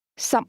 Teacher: 16 is pronounced with 2 low-level tones.